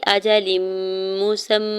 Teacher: لام کے نیچے 2 زیر کی تنوین کو میم شدت کے ساتھ ملاتے ہوئے غنہ کرنا ہے اور میم کو بغیر کھینچے ہوئے ادا کریں گے۔